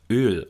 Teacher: hier sieht man sehr schön die für den gespannten laut Öl notwendige aber moderate lippenrundung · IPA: [øː]